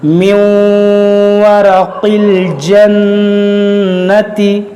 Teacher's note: یہاں پر دیکھیے نون مشدد ہے اس میں بھی غنہ کریں گے